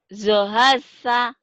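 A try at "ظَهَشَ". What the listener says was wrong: Zohasya, shinnya belum keluar ya. Zohasya, nggak apa-apa dilatih ya. Zohasya. Anginnya keluarin. Gitu loh. Sya.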